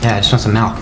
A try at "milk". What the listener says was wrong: No, you're saying it wrong. You're saying Malk, like it's a disease. Milk, M-I-L-K. Say milkshake. Okay, now say milk.